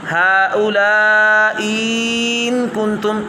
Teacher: یہاں طول اس لیے ہوگا چونکہ بعد میں ساکن ہے، مد لازم بن جائے گی